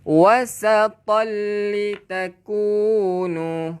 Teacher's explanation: Pastikan bila gunnah. Memasukkan tanpa dengung. Dia masuk terus dekat lam dan jangan dengung. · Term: idgham bila gunnah